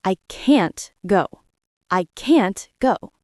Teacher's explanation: But can't is strong. It is long.